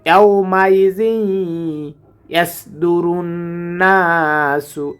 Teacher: এখানে আমরা গুণনা করব কারণ তানবিনের পরে ঈদগামের হরফ এসেছে